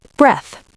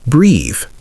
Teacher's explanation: Breath is short and stopped. Breathe is longer and open.